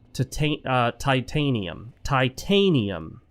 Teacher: The emphasis on the second syllable.